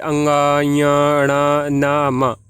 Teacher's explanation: वर्ण में आपका मुख एवं नाक दोनों से एक साथ हवा निकलती है। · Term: अनुनासिक वर्ण